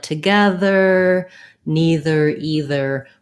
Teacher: it's pretty normal when there's a th in the middle words like together neither either for that th to be voiced